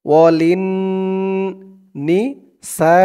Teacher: ওয়ালিন নি সা, সা 4 আলিফ টান, মধ্যে মুত্তাসিল